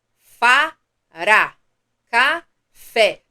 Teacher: percebe que a última sílaba é a mais forte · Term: oxítona